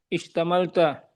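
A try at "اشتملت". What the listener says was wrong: Bukan ishtamalta. Tak sukun.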